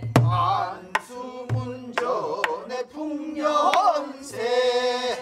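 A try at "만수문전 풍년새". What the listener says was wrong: 거기를 그렇게 너무 날카롭게 꺾지 말고 풍년 풍년새. 너무 날카롭고 크게 꺾지 말고 거기는 장식음이잖아.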